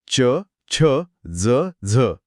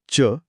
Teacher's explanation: हे तालव्य आहेत इथे जीभ टाळूच्या मधल्या भागाला स्पर्श करते